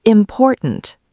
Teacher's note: The word important. The stress is on the second syllable